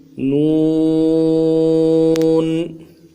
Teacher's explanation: نون کو 3 الف کی مقدار میں کھینچنا ہے، اخیر میں غنہ آنی ہے، غنہ کریں گے، نون ساکن ہے، اور نون کو ادا کرتے شروع میں ہونٹوں کو گول رکھیں گے، اخیر میں جا کے ہونٹوں کو سیدھا کریں گے۔